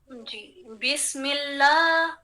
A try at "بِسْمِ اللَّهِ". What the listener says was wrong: یہاں آپ یا ڈال رہی ہیں، ہم نے یا نہیں ڈالنی، یہاں یا نہیں ڈالنی، ہم نے پڑھنا ہے بس با کسرہ سین سکون بسم اللہ.